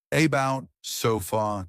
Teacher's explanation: Schwah the weak uh in many unstressed syllables. English uses a relaxed vowel like uh eg about sofa.